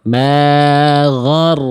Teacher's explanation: Tuh ghoin dan ro dua-duanya tebal tapi nggak ada yang monyong.